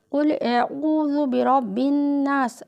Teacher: یہ قاف جو ہے بڑا قاف ہے، اس کو جو ہے یہ حروف مستعلیہ ہے، تو اس کو ہمیشہ ہونٹوں کو گول کر کے یعنی کہ موٹا پڑھا جاتا ہے، بولڈ پڑھا جاتا ہے۔